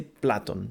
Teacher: a change of pitch and ascending pitch high pitch on the second last syllable · stressing on the second last syllable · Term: acute accent